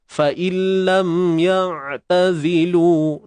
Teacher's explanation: untuk ain tu, kita matikan dia di tengah kerongkong kita dengan menyempitkan pada bahagian injak.